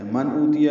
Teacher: نون ساکن کے بعد حمزہ آنے کی وجہ سے اظہار ہے